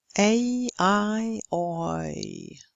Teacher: They're front closing because it's the front of the tongue that moves towards the closer position in the mouth. The tongue, as it's said here, ends up in a quite close position. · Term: front closing diphthongs